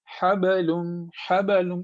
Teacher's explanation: با پہ جب بھی سکون ہو تو با کو تھوڑا سا یعنی باؤنس کرنی ہے آواز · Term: قلقلہ